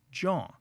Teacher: the dropping of the T from joint to get join kind of conforms to some of the way that Philly speech differs from New York City speech